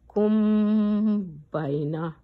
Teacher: میم کو ناک میں غنہ کرنا ہوتا ہے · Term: اخفا شفوی